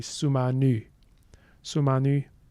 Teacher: We can see we have rounding harmony. So E becomes U after U earlier in the language, in the word.